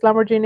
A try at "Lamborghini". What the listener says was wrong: Lamborghini. That's a hard G.